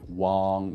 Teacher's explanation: it's using the father A, the wang with the jaw sort of open a little bit